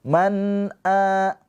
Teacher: Di sini nun sukun bertemu dengan hamzah, ini namanya izhar halqi. Nunnya dibaca dengan jelas. Man a. Nah, di sini ada hamzah yang dipanjangkan.